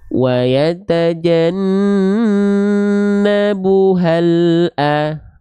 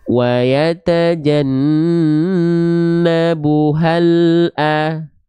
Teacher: pastikan bunyi lam sukunnya itu masih jalan, tidak tertahan antara bunyi lam sukun dengan huruf berikut setelah lamnya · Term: tawassut